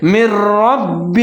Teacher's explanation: نون جو حرف ہے یہ حذف ہو جائے گا، جیسے من ربہ، میم اور را کو ملا کے پڑھیں گے اور را کو موٹا کر کے پڑھیں گے، لیکن آگے پھر با کے اوپر تشدید ہے، را اور با کو ملا کے پڑھیں گے، ان کو مضبوطی کے ساتھ پڑھیں گے۔